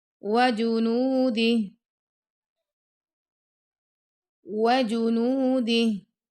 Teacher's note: جب آپ وجنودی پڑھیں نا آپ کے لپس لائک اراؤنڈ شیپ ہونا چاہیے